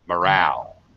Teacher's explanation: this is going to be second syllable stress, and the mo becomes ma. Morale. Like a schwa sound.